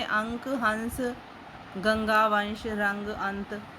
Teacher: इनके उच्चारण में हवा केवल नाक से निकलती है और इनका उच्चारण अधिक जोर से होता है।